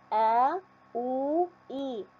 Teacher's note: لاحظوا لما ننطقها كأنها بتنتشر في هذا الخلاء اللي هو الجوف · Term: الحروف الجوفية